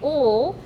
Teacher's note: when we say ul, the air comes out the sides of the mouth, producing that lateral approximate